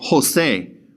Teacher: We're going to breathe that J like an H in English.